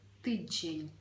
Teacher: звертаємо увагу що всередині присутній м'який звук Ж